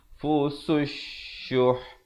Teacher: alif lam syamsiah, lamnya tidak dibunyikan